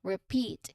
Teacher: The first syllable is re, which is short and unstressed. There's a short E sound.